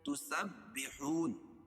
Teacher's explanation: سین کو با میں سختی سے ملائیں گے کیونکہ با پر تشدید ہے اور پھر با کے نیچے زیر ہے۔